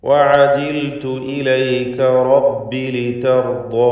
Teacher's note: റബ്ബി എന്നത് റാ മഫ്തൂഹത്തായതുകൊണ്ട് തഫ്ഖീം കൊടുത്ത് തടിപ്പിച്ച് സ്വരഭാരത്തോടെ ഉച്ചരിക്കേണ്ട സന്ദർഭമാണ്. ലിതർദാ എന്നതിൽ റാഇനും ശേഷം വന്ന ദ്വാദിനും അതിൻ്റെ ദീർഘാക്ഷരമായ അലിഫിനും തഫ്ഖീം വരുന്നു.